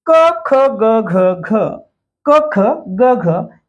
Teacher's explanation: याचा उच्चार कंठातून होतो म्हणून याला म्हणायचं कंठ